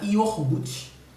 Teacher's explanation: esse segmento r ele é transferido transposto para a sílaba anterior